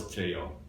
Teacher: Trello, very common, but if you look at the two L's, I mean, this is a very common thing in for instance, in Spanish words. Two L's is not pronounced as L, it's pronounced as more like a Y sound in English.